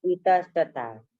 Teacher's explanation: और विसर्ग के बाद यदि दंत त रहा, विसर्ग के बाद यदि त रहा तो क्या होगा? दंत स।